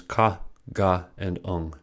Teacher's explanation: If we touch the roof of the mouth with the tongue and then keep moving the tongue farther back, we can find that softer area. The back of the tongue touches the soft palate when we say the sounds ka, ga, and ung. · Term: Velar consonants